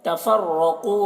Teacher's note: रॉ को पूर पढ़ेंगे और क़ाफ को भी पूर पढ़ेंगे